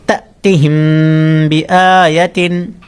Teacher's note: میم ساکن کے بعد با آ گیا تو یہاں پر اخفاء شفوی ہوگا تو اخفاء شفوی میں غنہ ہوتا ہے